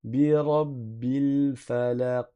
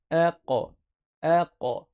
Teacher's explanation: On fait une qalqalah. Une qalqalah, c'est quand, malgré le soukoun, tu laisses faire rebondir le son juste après. Tu dis pas aq.